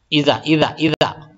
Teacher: سامنے کا جو دونوں دانت ہے اس کے جڑ میں ہماری زبان کا نوک جائے گا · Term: زال کا مخرج